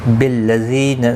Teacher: زی یا مدہ ہے، ایک الف کی مقدار کے برابر کھینچ کر پڑھیں گے، نہ کو کھینچنا نہیں.